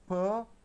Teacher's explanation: both the lips touch each other, air is held inside, it is let out with plosive